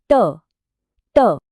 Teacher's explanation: ट वर्ग के लिए जीभ की नोक मुड़कर तालू की छत को छूती है